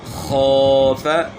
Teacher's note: خا جو ہے نا موٹے حروف میں سے ہیں اور گلے کے شروع سے ادا ہوتی ہیں